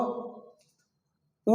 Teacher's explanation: या आप बोलिए किसी से, बोलिए हाँ देखो कैसा हो रहा है, नहीं, जब बोलेंगे तो आपका ओठ जो है, जब आप बोलेंगे तो आपका ओठ गोल हो जाता है,